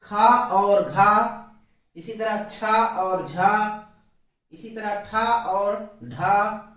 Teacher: उच्चारण में हवा की मात्रा मुख से अधिक मात्रा में निकलती है। अधिक मात्रा में बाहर निकलती है। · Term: महाप्राण